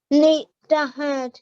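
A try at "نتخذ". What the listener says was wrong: So this is a kha, and we join on to the dal here, okay? kha from your throat, kha.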